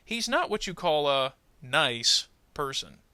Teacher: Notice I tended to put a little more emphasis on the word nice.